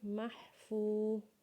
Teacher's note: میم کو جب ہا کے ساتھ ملائیں گے تو ہا کی آواز اپنے حلق سے نکالیں گے جیسے مح. اور فا کو جب واو کے ساتھ ملائیں گے تو اسے ایک الف کے برابر کھینچیں گے